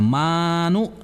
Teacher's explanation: ma itu dibaca dua harakat karena itu mad asli